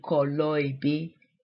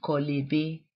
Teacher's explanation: So the O at the end of kolo sort of falls off, for lack of a better word. So it takes the vowel off the next word.